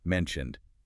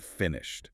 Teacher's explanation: the ed on mentioned sounds like a d, but on finished it sounds like a t